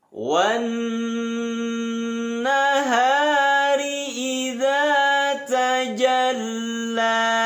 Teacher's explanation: nun tasdid ditahan dua titik